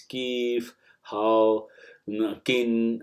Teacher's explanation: So it's pronounced as the K as in the king. So the K sound is used in the urban Hijazi.